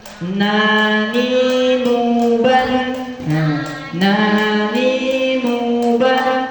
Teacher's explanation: Huruf na juga sedikit terserupa dengan huruf la, tapi dia sedikit ke belakang. Nah, makhraj na itu sedikit ke belakang.